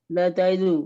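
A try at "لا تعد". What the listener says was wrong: नहीं, ला ताइद, यहाँ पे ताइदू नहीं कहेंगे, ला ताइद।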